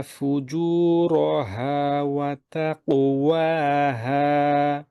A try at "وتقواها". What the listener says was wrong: واتقوا دي ঠোঁট গোল হয়ে যায় না যেন واتقوا وتقواها